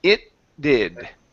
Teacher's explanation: combine the T and the D. So you do not need to pronounce the whole T sound